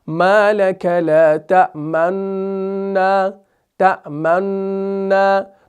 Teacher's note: تو آپ اس کے اندر کیا کریں گے، اشمام کریں گے، صرف ہونٹوں کو گول کریں گے، صرف شفتین کو گول کریں گے، یعنی اس ضمہ کی بو دیں گے